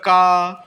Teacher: जब हमने बोला का तो गले से आवाज आ रही है। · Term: कंठ